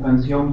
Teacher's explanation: Si yo tengo una palabra como canción, por ejemplo, sion tiene la mayor fuerza de voz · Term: acento prosódico